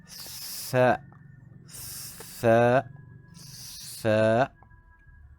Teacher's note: Huruf sa hujung lidah memainkan peranan, tetapi teknik bacaannya hendaklah dijelikan lidah tu sedikit melepasi gigi.